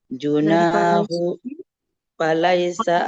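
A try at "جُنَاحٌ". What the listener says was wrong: junahun bukan junahu ada tanwinnya Bu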